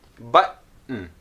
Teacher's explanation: the tip of the tongue does not move after the T. So you get to the T, button. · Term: unreleased T